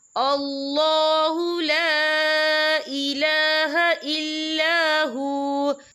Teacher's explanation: اس میں چھوٹی سی مد بھی ہے، تو ہم اسے 3 یا 4 حرکت کے برابر کھینچ کے پڑھیں گے